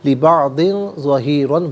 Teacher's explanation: بعض میں داد کے نیچے 2 زیر کی تنوین ہے، اس کے بعد حرف اخفا ظا آ رہا ہے، تو یہاں تنوین پر اخفا جو ہے وہ کیا جائے گا